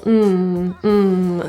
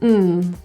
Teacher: this word's typically reduced to a quick little um so the vowel kind of goes away